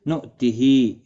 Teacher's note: حمزہ ساکن جھٹکی کے ساتھ ادا کیا جائے گا۔ ہا کے نیچے کھڑی زیر ہے، ایک الف کی مقدار کے برابر کھینچ کر پڑھیں گے۔